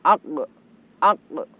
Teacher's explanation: Saat kita mengucapkan huruf qaf, kita akan merasakan bahwa huruf qaf itu keluar dari pangkal lidah. Pangkal lidah itu lidah bagian paling belakang. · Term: makhraj